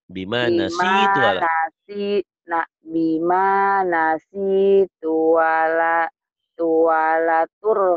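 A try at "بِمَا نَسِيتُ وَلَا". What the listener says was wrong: Jangan tuwala. Nggak boleh. Nggak boleh. Jangan dibiasain. Tuwala-tuwala nanti kayak tadi. Jangan nggak boleh ya. Itu nah, seperti merubah nama orang.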